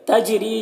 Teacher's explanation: جیم میں قلقلہ ہوگا، جیم کی آواز ٹکرائے گی. ری را کو باریک پڑھیں گے اور یہاں پر یا مدہ ہے، ایک الف کے برابر کھینچ کر پڑھیں گے.